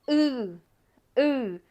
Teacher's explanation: uh like you're going to say oo but your mouth is not rounded your mouth is very closed and it's more in the back of your throat